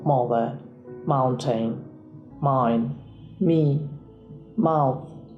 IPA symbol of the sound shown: m